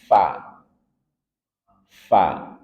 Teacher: Dan dia punya sifat hames. Keluar nafas atau udara. Khawuf. Lepaskan udaranya.